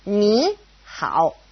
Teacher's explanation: if it's a third tone and a third tone next to each other, ni, hao, it changes to a second tone and a third tone